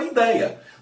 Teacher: nesse caso não existe a pronúncia ideia com ele fechado e ninguém fala assim todo mundo fala a idéia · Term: ditongos abertos